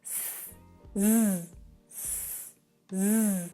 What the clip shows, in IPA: s, z, s, z